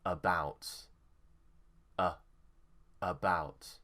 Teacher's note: the stress is on bout so it will be about